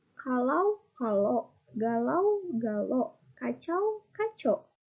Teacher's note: Monoftongisasi diftong AU menjadi O.